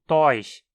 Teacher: Há falantes também que a pronunciam como tois, sem pronunciar o R.